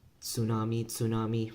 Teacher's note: when you're saying tsunami, that T is just kind of like left out